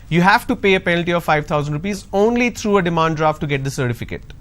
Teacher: the word only is taking the stress because I'm emphasizing